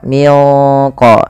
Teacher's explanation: nunnya disamarkan ke huruf qof karena dia ada bacaan ikhfa